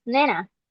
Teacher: So banana has three syllables, an unstressed b, a stressed ne, and unstressed na. The child deletes only the initial unstressed syllable, giving us nena. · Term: weak syllable deletion